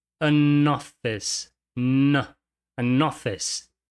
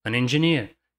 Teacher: como esse an sempre vai vir antes de um som de vogal, a gente vai ter a junção do N com essa próxima vogal